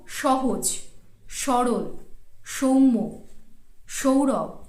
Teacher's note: প্রত্যেকটিতেই দেখুন বানানে কিন্তু রয়েছে দন্তস্ব, কিন্তু আমি উচ্চারণ করছি তালব্যস্ব